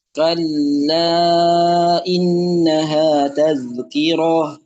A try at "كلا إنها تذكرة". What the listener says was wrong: Jangan roh, rohnya pendek. Dari roh itu langsung dibaca ke huruf ta marbutonya. Kalla innaha tazkirah.